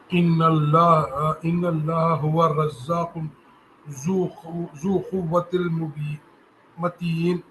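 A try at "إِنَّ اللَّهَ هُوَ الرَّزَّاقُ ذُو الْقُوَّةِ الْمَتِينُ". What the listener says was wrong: یہ آپ کی نا تلاوت میں غلطی ہے، یہ ذو نہیں ہے بلکہ ذو القوۃ المتین ہے۔ ان اللہ هو الرزاق ذو القوۃ المتین۔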